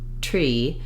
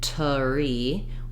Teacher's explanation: my tongue can immediately make the r sound after the T otherwise I end up with something more like tari where I'm